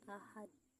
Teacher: Ahad itu hukum tajwidnya qalqalah kubro karena huruf dal di akhir ayat berharokat tanwin berubah menjadi sukun saat waqaf, dibaca memantul dengan kuat